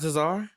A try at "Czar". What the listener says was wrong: No, the C's silent. Just Czar. Like a Czar of Russia? Yeah. Kind of like how the K and night.